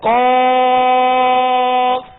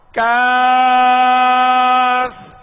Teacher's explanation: دو نقطے والے قاف کو پر پڑھنا ہے، موٹا پڑھنا ہے، حروف مستعلیہ میں سے ہے، اور جو ڈنڈی والا کاف ہے اس کو باریک پڑھنا ہے